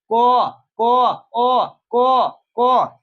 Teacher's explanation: क को पढ़ते हैं तो उसके साथ आता है अ क अ क इसके साथ अ भी आ रहा है।